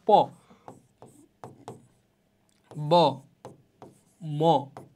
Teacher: এগুলো উচ্চারণের ক্ষেত্রে তুমি দেখতে পাচ্ছ তোমার যে দুইটা ঠোঁটই একসাথে লাগাইতে হচ্ছে। ঠোঁট যদি দুইটা একসাথে না লাগাও তাহলে কিন্তু এগুলো উচ্চারিত হবে না। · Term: দ্বি ওষ্ঠ